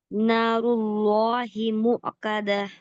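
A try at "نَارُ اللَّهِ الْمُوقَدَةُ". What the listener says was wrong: नारुल्लाहिल। मुक़दा। और रॉ को आप हैवी कर रही है, लेकिन आपको हैवी आपकी जबान से करना है, मतलब पीछे का हिस्सा ऊपर उठा के, ना कि आपके लिप्स को राउंड करके।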